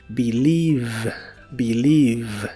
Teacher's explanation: la V o V chica como la conozcas en inglés es labiodental y vibrante.